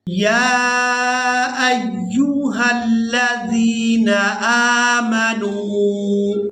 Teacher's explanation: یا کو کھڑی زبر اور مد کی وجہ سے کھینچ کر ادا کریں گے۔ حمزہ کو یا مشدد کے ساتھ ملائیں گے تو سختی کے ساتھ ادا کریں گے۔